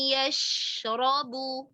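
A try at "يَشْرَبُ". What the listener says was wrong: را کو اور پر کریں.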